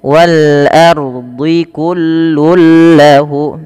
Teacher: adanya tanwin bertemu dengan lam, masuk tapi tidak ditahan dengan gunnah. Maka idgham bila gunnah, maaf.